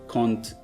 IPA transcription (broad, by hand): kąt pęk sępy